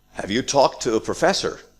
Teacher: This is a yes/no question, so we have rising intonation.